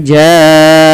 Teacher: lafal ja panjangkan huruf ja di sini sepanjang 4 atau 5 harakat karena adanya bacaan mad wajib muttasil pada lafal ja'ahum ditandai dengan huruf ja yang awalnya 2 harokat bertemu dengan hamzah.